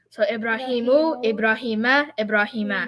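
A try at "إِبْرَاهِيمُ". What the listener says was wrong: Wonderful. You get the idea.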